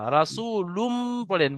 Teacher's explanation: রাসূলুম পড়েন, লুন নয়, মিম পড়েন। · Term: ঈদগামে